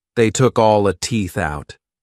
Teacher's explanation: pronounces this more openly and drops the final T sound